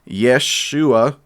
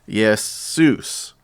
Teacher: there's no sh sound in Greek. So instead of a SH sound, they add an S.